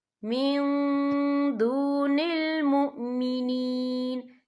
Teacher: اولیاء من دون المؤمنین، یہ دیکھیں من، یہاں نون ساکن ہے، نون ساکن کے بعد جو ہے دال آ رہا ہے، اور دال جو ہے اکفا کا ورڈ ہے، تو ہم یہاں اکفا کریں گے، نون ساکن کی آواز کو ناک میں چھپائیں گے۔